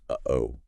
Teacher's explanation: usually just an H sound or maybe a glottal stop that little catch in uh-oh